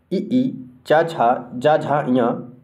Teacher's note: तो ई, चा, छा, जा, झा, या इन सभी का उच्चारण तालु से होता है